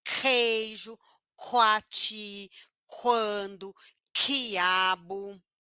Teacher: lá ó ponto velar a língua vai lá TR na garganta explode o ar e surdo porque não faz força no pescoço